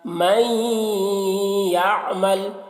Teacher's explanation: نون یا کے ساتھ کا ادغام ہو رہا ہے لیکن ناقص طور پر اور غنہ کے ساتھ